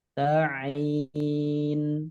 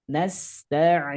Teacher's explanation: huruf ain keluarnya dari tengah tenggorokan. Jangan sampai tertukar dengan huruf hamzah.